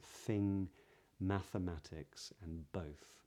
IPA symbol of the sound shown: θ